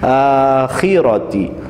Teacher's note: وَفِي الْآخِرَةِ میں کھڑا زبر کو کھینچنا ہے۔ اس کے بعد خا کو بہت احتیاط کے ساتھ خراش اور خراٹے کے ذریعے پڑھنا ہے